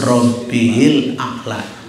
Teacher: alif dan lamnya ini termasuk al-qamariyah ya, karena bacanya jelas